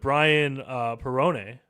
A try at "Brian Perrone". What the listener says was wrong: Peone. It's Peone. There's no art. There's no art.